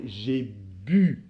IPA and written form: ʒe by (I BU)